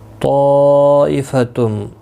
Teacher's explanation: طائفتم، بڑی مد متصل ہے، 4 الف کی مقدار کے برابر کھینچ کر پڑھیں گے. تنوین کے بعد حروف یرملون کا میم آیا ہے، ادغام مع الغنہ ہوگا